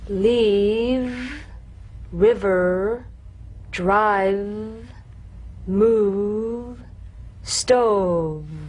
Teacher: You'll feel a gentle, dark, buzzing vibration on the lower lip. All suggestion of the F must be out of there, otherwise your V sounds like an F.